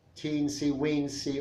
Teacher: a high front vowel e or other vowels close to it to indicate smallness affection or intimacy